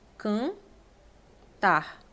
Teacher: Em cantar você não escuta o N, você escuta o A nasalizado